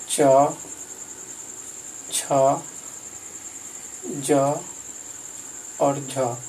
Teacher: और च, छ, ज, झ, इसका उच्चारण स्थान तालु है